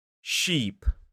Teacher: the E sound in sheep is slightly further forward towards the teeth